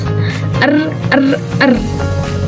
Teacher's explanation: Nah, ini lidah R digetarkan dan hingga menyentuh langit atas. [Musik] R. Nah, bergetar gitu.